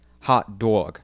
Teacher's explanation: the more down state you go the less fronted that short o in hot is going to be and the more raised that uh o sound in dog